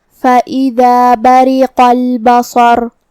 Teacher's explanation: کلمت بریقہ میں را کے نیچے زیر ہے تو یہاں را کا حکم ہے ترقیق. را کو پتلی آواز میں پڑھیں گے · قاف کی ادائیگی زبان کے جڑ اور تالو کے نرم حصے سے ہے